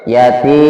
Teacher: Yati di situ adalah panjang 2 harokat mad tabi'i